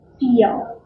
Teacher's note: Dark L at the end of that